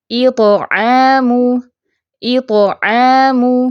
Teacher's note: اوپر سیدھا منہ کھولیں، جڑ سے زبان اٹھائیں، جیسے یہ پک میں آپ کو نظر آ رہی، اس طرح آپ کی زبان کی شیپ ہونی چاہیے، پھر یہ تو ٹھیک نکلے گا. تو عین کو لائٹ رکھنا ہے، تو آمین ایسے نہیں پڑھنا، عین کو ساتھ میں موٹا نہیں کرنا